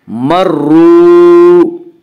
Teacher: مرو، وا مدہ وہ وا جو ساکن ہو اور اسے پہلے پیش ہو، وا مدہ کو 1 الف کے برابر کھینچ کر پڑھیں گے